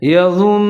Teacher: یظنون، نون کے اوپر زبر ہے، لیکن جہاں پر ہم وقف کریں گے تو نون زبر کی آواز کو ہم نون ساکن کی آواز کے ساتھ تبدیل کر دیں گے، جیسے یظنون، اور نون مشدد ہونے کی وجہ سے ادغام بھی کریں گے، یعنی کہ آواز کو 3 سے 4 سیکنڈ تک ناک میں لے جائیں گے۔